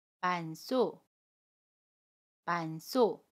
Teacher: 두 번째 받침 히읗은 첫소리로 이동을 해서 시옷과 합쳐져서 쌍시옷으로 발음해요.